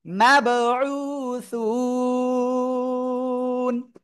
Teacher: এই একালিফ মাদের জায়গায় আমরা তিন আলিফ টেনে পড়বো থেমে পড়ার কারণে